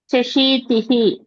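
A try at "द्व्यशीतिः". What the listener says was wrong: కాదు ఉండండి, అది అలా చదవకూడదు. ద్వ్య అని చదవాలి. ద్వ్యశీతిః ఒక నిమిషం. ద్వి అశీతిః కాస్త కలిసి ద్వ్యశీతిః అవుతుంది. DBYA అని చదవాలి. ద్వ్యశీతిః.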